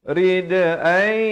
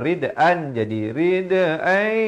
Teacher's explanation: Di sini idgham bi gunnah. Daripada rid'an jadi rid'ai. Dua harakat dengung.